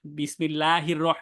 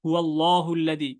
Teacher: এখানে আল্লাহ শব্দটা লা চিকন হইলো আবার হুয়াল্লাহুদি এখানে মোটা হইলো